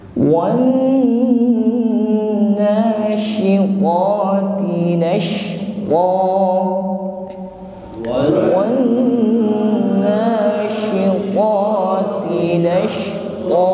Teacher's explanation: nun tasydid ditahan sampai berdengung ya, ada gunnah musyaddah. Setiap nun dan mim yang bertasydid maka ditahan sampai berdengung.